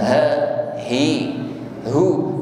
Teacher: pastikan keluar dari makhraj aqsal halqi, tenggorokan paling bawah, suaranya gema